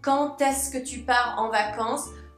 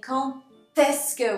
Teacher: maybe you can hear I'm saying quand est-ce que with a T. Quand est-ce que, even though the last letter of quand is a D. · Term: liaison